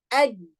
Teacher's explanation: When it was shidda, ad, completely blocked. The sound completely blocked.